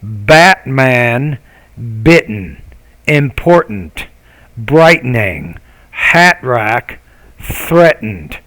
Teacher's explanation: Lesson 15, the main thing is I want you to review the glottal stop consonant sounds in that lesson. So in American English, the T, when it's in the middle like this, we don't really pronounce it.